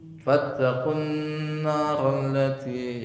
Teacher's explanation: Jadi gunna dua harokat, nun yang ditasdid.